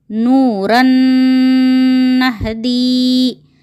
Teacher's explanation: را پر تنوین ہے، تنوین کے بعد نون آنے کی وجہ سے یہاں پر بھی ادغام مع غنہ ہوگا